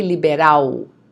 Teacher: Notice the pronunciation of the L at the end of the word, okay? It's not L, it's U